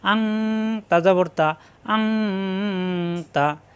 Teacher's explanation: নুন সাকিনের পরে আসছে তা অনের মত গুন্না হবে ইকফা গুন্না